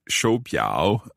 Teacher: so there's two third tones there the first tone changes to second